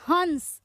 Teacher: ह के बाद बिंदु का उच्चारण हो रहा है यानी ना आ रहा है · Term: अनुस्वार